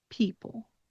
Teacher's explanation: People. When you pronounce people, the stress is definitely on that first syllable. And then you close your jaw a little bit and you reduce your emphasis when you end with the end of the word people. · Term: dark L